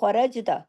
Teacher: خَرَجْتَ را ہیوی اور جیم پہ کلکلا ہوگا